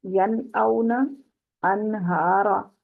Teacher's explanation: حمزہ اور ہا حروف حلقی میں سے ہیں، انتہائی حلق کے دونوں حروف ہیں